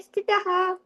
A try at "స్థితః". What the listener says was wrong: స్థితాహ అదొకటి తప్పు.